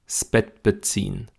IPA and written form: sb̥ɛt̚b̥əˈt͡siːn (Bett beziehen)